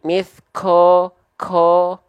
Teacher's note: masih ada percikan-percikan nafas keluar jadi ada becek-beceknya